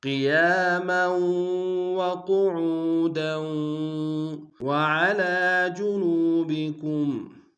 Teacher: وعلى میں عین گہرائی سے ادا کریں گے